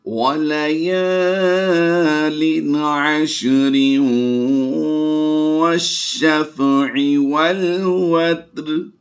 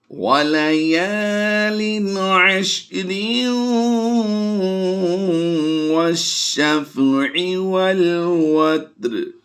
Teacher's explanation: جب ہم واو کے ساتھ اسے ملا کر پڑھیں گے تو پھر یہ لفظ جو ہے وہ را واو دو زیر ریوں کی آواز دے گا۔ تو یہاں پر تنوین کے بعد حروف یرملون میں سے واو آیا تو ہم یہاں پر ادغام مع الغنہ کرتے ہوئے اس کو ملا کر پڑھیں گے